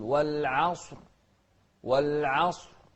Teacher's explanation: ننتبه للصاد المفخمة والعين المرققة، فنقول والعصر.